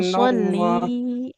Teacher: lamnya kan kasroh ya di depannya nempel dengan bersambung dengan huruf ya, maka panjang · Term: Lamnya panjang